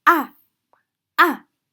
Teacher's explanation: The fourth tone has a sharp sudden fall from the fifth line to the first line. So it sounds actually sounds like a falling object which is hitting the bottom with a third.